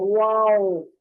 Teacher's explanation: वाओ होंठों को मुकम्मल गोल करके, वाओ ना होंठ कहीं आपस में टकरा रहे हैं, ना होंठों को दांत टच कर रहे हैं